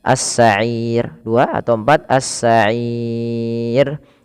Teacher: Mad Arid sukun panjangnya boleh dua boleh empat boleh enam